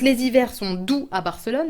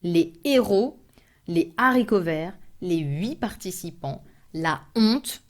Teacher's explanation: H aspiré, I'm not allowed to put L apostrophe and I cannot do any linking when I speak in plural